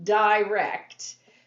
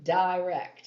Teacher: the singer wants you to emphasize that first syllable and it wouldn't sound good if you said direct it just